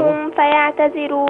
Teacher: ما فيهاش غنة، دي ميم ساكنة بعدها فاء، ما فيش فيها غنة